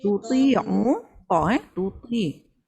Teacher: Kadang-kadang bila ba dia jadi syiddah, dia tapi tak adalah panjang sangat. Kalau tawasud kan, dia syiddah, dia rahawah, ada ekor suara sedikit. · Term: huruf Ain